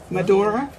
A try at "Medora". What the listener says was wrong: Well, you say Mado. We say Mado.